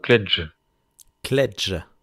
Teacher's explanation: Le J, c'est comme en anglais et donc pas comme en français. Faut faire un peu comme s'il y avait un D devant